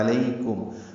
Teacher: کاف باریک ہے، میم ساکن پہ اظہار شفوی ہے